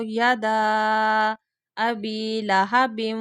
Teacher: دال کے آگے مد آ رہی ہے تو اس کو لمبا کریں گے دال کو